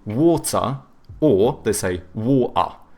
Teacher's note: the British, they tend to have either hard T's or they do like the glottal T, so it, but then they do a schwa instead of pronouncing the R, so they say water or they say water.